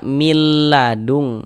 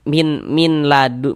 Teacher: Nah, di sini kan ada ada nun sukun nih. Bunyi nun sukunnya masukkan ke huruf lam. Melebur ke huruf lam. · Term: idgham bila ghunah